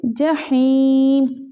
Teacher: हा को हम हलक से निकालेंगे